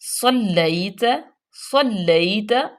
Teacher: لام سختی سے، یا لین اور تا باریک پڑھیں گے ، تا پہ زبر ہے۔ صلیت علی ابراہیم، علی ابراہیم، عین